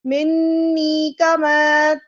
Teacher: یہاں منی میں دیکھیے نون مشدد ہے، غنہ ہے